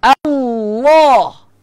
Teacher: pangkal lidah angkat. Sebab dia ada sifat tebal.